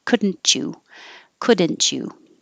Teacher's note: the t and the y make a cha and so you can connect that together